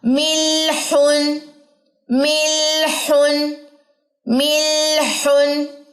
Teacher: بلکہ اس میں توسط ہے اور درمیانی کیفیت رہے گی. آواز ایک موڑ پہ جا کے جو ہے وہ درمیانی سی کیفیت اختیار کر لے گی، نہ جاری نہ بند